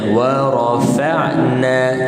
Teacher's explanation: Wa nipis, ra tebal, fa nipis, dan kemudian ain, kemudian na.